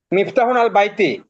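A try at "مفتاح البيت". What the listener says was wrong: মিফতাহুল বাইতি। মিফতাহুল বাইতি। এখান থেকে দুই পেশের বদলে কি হবে? এক পেশ হয়ে যাবে। দুই পেশের বদলে এক পেশ হবে।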